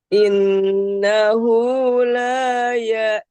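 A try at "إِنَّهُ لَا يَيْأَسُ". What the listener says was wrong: lainnya kurang. Dengungnya kurang.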